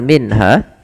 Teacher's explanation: dua harakat saja kemudian padafal minha di sini ada bacaan izhar izhar yaitu membunyikan suara Nun dengan jelas